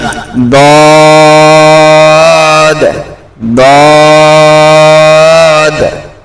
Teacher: জিভের এক পাশ উপরের তালুতে একদম ঠেকে যাবে।